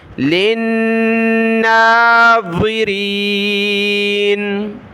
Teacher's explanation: لام کو نون کے ساتھ ملایا نون کی طرح، یہاں بھی اس کو کھینچنا ہے، غنہ بھی کرنا ہے، لِلنَّاظِرِينَ بُرُوجًا وَزَيَّنَّاهَا لِلنَّاظِرِينَ۔